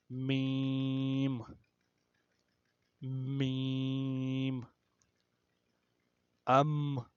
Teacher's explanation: اور میم جو ہے یہ بھی بند ہونٹوں سے، لیکن بند ہونٹوں کا جو خشک والا حصہ ہے وہاں سے ادا ہوتا ہے. خشک والا حصہ یعنی جو باہر والا حصہ ہے، اور گیلے والا حصہ جو یعنی کہ جو ہونٹوں کا اندر والا حصہ ہے.